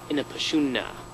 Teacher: you hold the n Sound twice